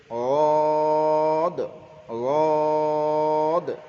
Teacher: জদ, জদের মাখরাজ জিবের আগা, জিবের কিনারা, জিবের কিনারা এবং সামনের দুই পাশের দাঁতে, দুই দাঁতের জিবের কিনারা এবং সামনে দুই পাশের মাড়ির দাঁতের গোড়ার সঙ্গে লাগিয়ে, দুই পাশের মাড়ির দাঁতের গোড়ার সঙ্গে লাগিয়ে হয় জদ। জিবের কিনারা এবং দুই পাশের দাঁতের মাড়ির গোড়ার সঙ্গে লাগিয়ে উচ্চারিত হয় অদ